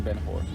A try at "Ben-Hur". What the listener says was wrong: You said whore. I would say her. Because you're supposed to say Ben-Hur.